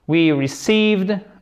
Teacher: I court, I long. Accent tonique sur la seconde syllabe, sur la deuxième syllabe.